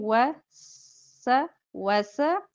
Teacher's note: बारीक सीन में सीटी होती